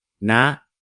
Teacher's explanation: la consonne initiale est basse, il faut donc regarder la longueur de la voyelle et puisque la voyelle est courte, le ton est haut